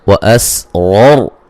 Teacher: را کو موٹا ادا کریں گے دونوں راؤں کو. یہ را کے اوپر زبر تب موٹی ہو رہی ہے اور یہ را ساکن سے پہلے زبر موٹی ہو رہی ہے.